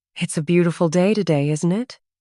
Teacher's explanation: Notice intonation. The voice rises slightly on, isn't it?